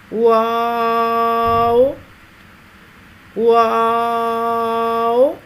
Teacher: ہونٹوں کو چونچ کی مانند گول کرتے ہوئے باریک آواز میں پڑھیں گے